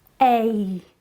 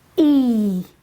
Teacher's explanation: these diphthongs are a look at how my mouth moves a I've gone from an air sound to an e sound